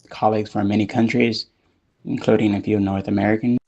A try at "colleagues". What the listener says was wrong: Colleagues. Trying to think of how much air I blow out with that K sound at the beginning of colleagues. Because I feel like maybe you're overdoing it a little, like too much air. Compared to me anyway. all this is air. Before the vowel. And maybe instead of with colleagues, I might do with colleagues.